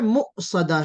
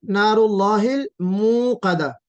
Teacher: مؤصدہ میں جھٹکا ہے، اور موقدہ میں کیا ہے، مد ہے، جھٹکا نہیں ہے، واو مدیہ ہے